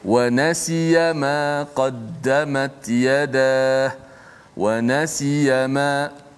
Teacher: walaupun tidak ada panjang gunnah kat situ, tapi sifat asli pada nun tu memang dah ada gunnah